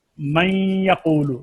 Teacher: متقاربین قریب المخرج دو حروف کا ادغام، جیسے من یقول، نون کا یا میں ادغام کیا ہے